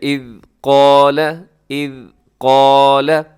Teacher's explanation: آگے آپ ملا کے پڑھیں، یعقوب الموت اذ قال لبنیہ، اذ قال، یہاں بھی ذال ہے، اسے از نہ پڑھیے گا، اور قاف الف قا اسے موٹا رکھیے گا، لمبا کیجیے گا